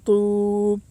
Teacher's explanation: واو ساکن سے پہلے پیش ہے، اس لیے واو مدہ ہوگا۔ واو مدہ کو ایک الف کے برابر کھینچ کر پڑھیں۔